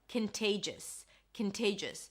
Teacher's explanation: Contagious. Here you pronounce it with a k sound at the beginning, a schwa and an n, kin, there is no o. Then te, that's the primary stress, te, and then jus, a jus sound, a schwa, and an s.